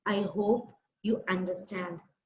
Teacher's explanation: I had a higher tone of speaking the sentence. When I ended up the sentence, I hope you understand, that was in a very low tone.